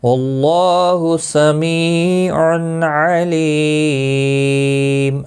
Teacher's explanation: لی یا مدہ ہے، ایک الف کے برابر کھینچ کر پڑھیں گے، اور وقف کی صورت میم ساکن پڑھا جائے گا، واقع بالاسکان ہوگا، مد العارض وقفی ہوگا، 3 سے 5 الف کے برابر کھینچ کر وقف کریں گے